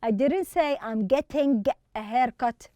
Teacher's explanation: We don't pronounce the G at the end.